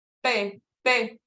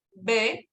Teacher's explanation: También la P es una bilabial sorda y la B una bilabial sonora. La P es bilabial sorda porque al momento de producir el sonido no vibran las cuerdas vocales